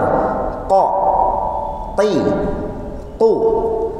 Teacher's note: Sifatul huruf yang ada di kedua huruf ini berbeda. Kalau ko, tertahan udara jangan sampai keluar, sifatnya al-jahru atau al-jahr.